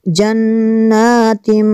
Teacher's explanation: نون میں شدت ہے، یہاں پہ غنہ کریں گے